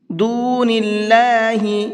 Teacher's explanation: اللہ کے لام کو باریک کر کے پڑھیں گے